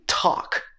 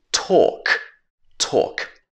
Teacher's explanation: In some instances, this sound in American English would be ah, and in British English, it changes to or.